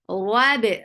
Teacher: ra is heavy for fatha open jaws